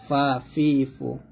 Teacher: ফা উপরে দাঁতের নিচের ঠোটের বাতাস চালু রেখে উচ্চারণ করতে হবে। ফা অর্থাৎ উপর দুই দাত নিচের ঠুটের সাথে লাগাবেন